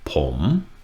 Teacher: poem is a rising tone